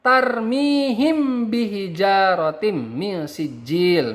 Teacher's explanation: Sedangkan ee sapawi itu artinya adalah bi bibir. Jadi apabila mim sukun bertemu dengan huruf ba, maka bacaannya harus disamarkan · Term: ikhfa syafawi